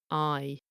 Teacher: You notice it's going from an ah to an I sound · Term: diphthong